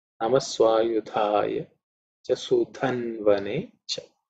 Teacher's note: Okay, Dha again is the fourth letter in the Tha Varga, so it has to be aspirated. And Sudha again is the same Dha, which is the fourth letter in the Tha Varga, has to be aspirated · In terms of pronunciation, Swayudha. Okay, Dha again is the fourth letter in the Tha Varga, so it has to be aspirated.